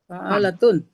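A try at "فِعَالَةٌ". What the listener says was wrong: fi jadi fi. salah taruh ininya. Salah taruh. Kasroh ya, fi. Iya, kasroh.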